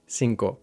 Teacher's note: So when we say words like singo, we inadvertently apply the same gliding vowel that we use in English in so or no. So we end up saying instead of cinco sinko.